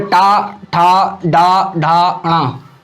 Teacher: जीभ उल्टी होके और तालु के पिछले हिस्से को स्पर्श करती दिखाई देती है। ये हमारा मूर्धन्य का हिस्सा होता है।